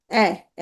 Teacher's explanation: এ নিম্ন মধ্য অর্ধ বিবৃত সম্মুখ